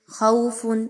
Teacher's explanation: خوف، خا زبر وا، خو، واو پر جزم کا نشان ہے اور خا پر زبر، واو لین کہتے ہیں اس کو، 1 سے 2 الف کے برابر اس کی ادائیگی رکھنی ہے